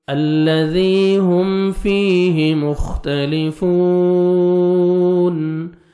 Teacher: ذال کو اپنے نرمی سے ادا کر کے 1 سیکنڈ کھینچیں گے